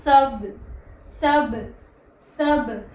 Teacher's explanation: با پر اگر جزم ہو تو پڑھتے وقت اس کی آواز لوٹے گی